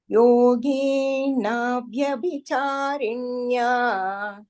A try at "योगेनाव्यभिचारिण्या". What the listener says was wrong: There is no visarga there.